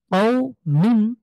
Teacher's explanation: মিন দুই জের মিন কও মিন এখানে যেহেতু ওয়াক্ফের চিহ্ন আছে আমরা মিম কে সুকুন দেবো এবং কও কে এক আলিফ টেনে পড়বো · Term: মাদ্দে লিন